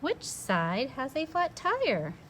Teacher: my voice is going up i'm wondering it's an asking sentence